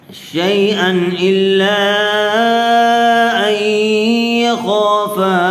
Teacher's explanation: تنوین کے بعد حروف حلقی میں سے حمزہ آیا ہوا ہے، اس لیے بغیر غننے کے جلد اظہار کر کے پڑھیں گے۔